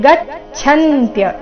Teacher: ಗಚ್ಚಂತ್ಯ ಛ ಮಹಾಪ್ರಾಣ ಚೆನ್ನಾಗಿ ಕೇಳಿಸ್ಬೇಕು